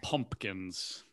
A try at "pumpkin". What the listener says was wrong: Yours is pumpkin. Like you skip the second P. So it's not pumpkin.